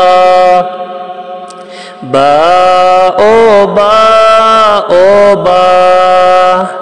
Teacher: এই বা যখন আপনারা উচ্চারণ করবেন, দুই ঠোঁট হইতে এটা আমরা উচ্চারণ করব।